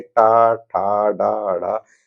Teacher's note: ट वर्ग में जितने भी वर्ण आएंगे ट ठ ड ड ये सभी वर्ण जो है मूर्धा से बोले जाएंगे